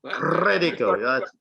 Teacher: To get your name right, you have to roll your R's.